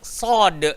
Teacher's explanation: Hujung lidah, langgar belakang gigi bawah, dan dia kena gemuk dan tebal.